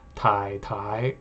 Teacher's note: if you double it double the character then the second one usually changes to a rising tone